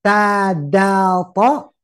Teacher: Ujung lidah kena pangkal gigi